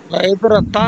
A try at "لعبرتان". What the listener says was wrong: لعبرتن تن نہیں ہے، عبرتان